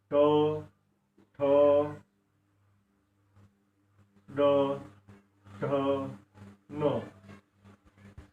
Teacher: जिभेचा शेंडा जे आहे थोडासा मुदडला जातो आणि स्पर्श होतो. असं असे हे जीभ जो काही शेंडा आहे तो टाळूला स्पर्श होऊन ज्यांचा उच्चार होतो त्यांना आपण मूर्धन्य वर्ण असं म्हणतो.